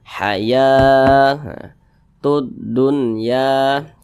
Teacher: Karena ada tanda nih ya, fathah berdiri. Mad tabi'i panjangnya 2 harokat